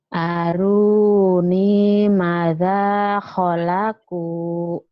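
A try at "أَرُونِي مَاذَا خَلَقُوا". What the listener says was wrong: Ma-nya panjang, da-nya panjang. Ayo lagi, ayo hati-hati, hati-hati.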